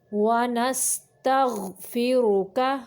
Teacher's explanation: غین کو قلقلہ نہیں کریں گے، را کو موٹا پڑھیں گے اور کاف کو باریک پڑھیں گے۔